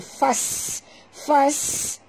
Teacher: Bunyikan safir pada sin.